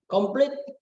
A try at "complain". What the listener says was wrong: Bukan komplit. Complain. Ya, complain ya, berakhirkan N ya. Complain.